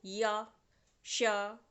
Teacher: जीभा थोड़ा सा हमारे तालु में भी छुई और पूरी तरह से नहीं छुई है लेकिन छुई है, और इसमें ऊष्मा मतलब हवा रगड़ लगी है, तो ये ऊष्म व्यंजन के साथ साथ हमारा तालु से संबंधित है।